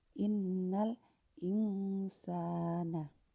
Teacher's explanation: jadi non sukun itu disamarkan sedikit tapi bukan terlalu mendengung seperti Idgham Bighunnah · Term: Ikhfa, ikhfa